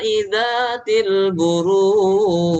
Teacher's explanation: pantulan di huruf Jim itu pantulan bukan aliran